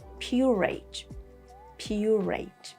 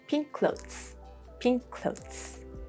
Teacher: when the same letter, the same consonant is both at the end of a word and at the start of the next word, you say just one sound, one letter.